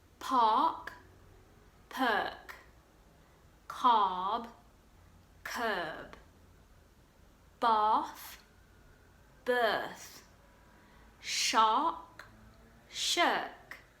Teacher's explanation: Now, and Americans, Irish and some Southern English people use a hard R sound, but in RP accents, which is what I have, we don't pronounce the R